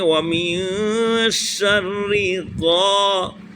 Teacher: غین کا مخرج حلق کے اوپر والے حصے سے غین، غین اور الف حروف مدہ لہذا اس کو کھینچیں گے تھوڑا سا. · را وہی را کو باریک پڑھیں گے